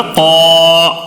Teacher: الف مدہ ہونے کی وجہ سے ایک الف کھینچ کر پڑھنا ہے